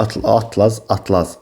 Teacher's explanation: atlaz sözündə vurğu ikinci hecanın üzərinə düşür